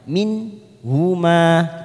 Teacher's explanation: Min huma kita baca jelas tanpa mendengung. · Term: idhar halki